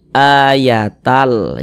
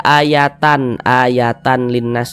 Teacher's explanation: cara membacanya dengan cara memasukkan kemudian tidak disertai dengan ghunah tidak disertai dengan dengungan · Yang dimasukkan itu ini bunyi tanwinnya ini masuk ke huruf lam, melebur ke huruf lam. Kita baca ayatal, jangan dibaca ayatan linnas, jangan, tapi dibaca ayatal seperti itu. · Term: idgham bila ghunah, idgham bila gunnah